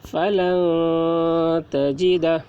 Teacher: نون ساکن کے بعد حروف اخفا میں سے تا آ رہا ہے، اس لیے نون کی آواز کو ناک میں چھپا کر پڑھیں گے، اس کو اخفا کہتے ہیں۔